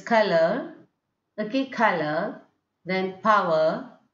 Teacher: we are just ending it without pronouncing R in a proper way.